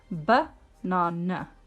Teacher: with banana, there are two schwa sounds in that word